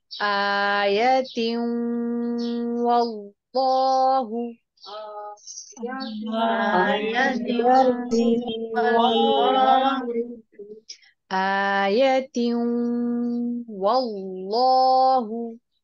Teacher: تا کے نیچے تنوین ہے اور اس کے بعد واو ساکن یرملون میں سے آ رہا ہے، تو ادغام مع الغنہ کریں گے. اللہ کے نام کو پر کرتے ہوئے اس کے اوپر 2 حرکات تک زبر کو کھینچ کے لمبا کریں گے